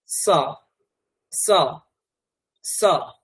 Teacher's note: এখানে শকুন্তলা ম্যাডাম রয়েছেন, ওনার নাম যদি আমি বলতে চাই শকুন্তলা মহোদয়া, শকুন্তলা, তাহলে এই যে তালব্য সটা এটা হচ্ছে স মানে দন্তস্ব এবং মূর্ধন্য স এর মাঝামাঝি রাখতে হবে, আর দন্তস্বকে একদম দাঁতের কাছেই জিভটাকে দিয়ে উচ্চারণ করতে হবে, তাহলেই স এই উচ্চারণটা বেরোবে।